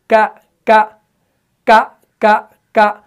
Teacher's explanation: तो इसी ट्रिक के तौर पर आपने इसको सीखना है और महसूस करना है कौफ के वक्त क्या होगा कि वहां पर ऊपर का जो नरम तालु है वो जुबान के पिछले वाले हिस्से से चिपक जाएगा, लेकिन काफ में ऐसा नहीं होगा। यानी काफ में क्या होगा, जुबान का जो पिछला वाला हिस्सा होगा वो ऊपर के सख्त तालु से लगेगा, तब जाके काफ अदा होगा।